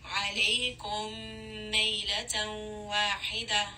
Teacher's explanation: So here in عَلَيْكُمْ we have meme with a sukun. The next letter is going to be meme with a shadda. So this is going to be idgham. Merge these together.